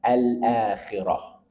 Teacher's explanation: ta tersebut disukun dan diubah bunyinya menjadi ha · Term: ta marbutoh